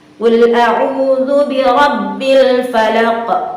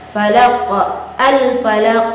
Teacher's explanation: Nah, di situ terjadi pantulan suara. Ada suara yang memantul ketika qaf itu dilafazkan, karena cara melafalkan qaf itu salah satunya juga adalah memantulnya suara. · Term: qalqalah